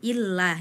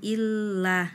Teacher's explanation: Illa itu lamnya ditasydid, tapi di situ bacaannya namanya bila gunah ya, tidak ada penekanan, tidak dengung, tidak ditahan, harusnya cukup dihentak, illah, jangan illah.